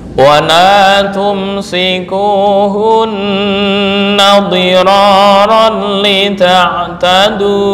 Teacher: Dira tafkhim ya. Kenapa? Karena ra berharokat fathah.